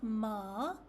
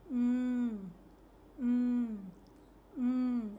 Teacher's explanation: The lips are together at the start of the sound. For mm, the lips stay closed and the sound is produced nasally, which means it comes from your nose.